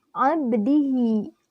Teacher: Karena huruf qalqalah ba berharkat sukun dan posisinya di tengah kalimat. Cara membacanya pun dipantulkan secara ringan. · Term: qalqalah sugro